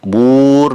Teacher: kubur bur dipanjangkan maksimal 6 harokat, madari disukun.